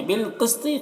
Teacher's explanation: कौफ को पुर पढ़ना है, तौ को भी पुर पढ़ना है, और यहाँ पर वक्फ करेंगे तो तौ में कलकला भी करना है। तो इसको देखिए, इस तरीके से हम पढ़ते हैं।